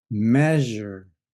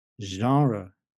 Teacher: the big difference is there's no sudden burst of Air instead there's a very smooth release of air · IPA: ʒ